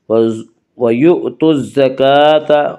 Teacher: کاف کے اوپر کھڑا زبر ہے، کھڑا زبر کو 1 الف کے برابر کھینچ کر پڑھیں گے